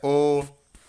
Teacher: ओ का उच्चारण स्थल कौन सा है? ओ बोलने में देखिए आपका ओठ जो है गोल हो जा रहा है और यहाँ से कंठ का भी उपयोग हो रहा है, तो ओ आपका हो गया कंठ ओष्ठ हो गया।